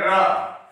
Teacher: रा घूमता है और मूर्धन्य से कहलाता है। इन सभी का उच्चारण स्थान मूर्धा है।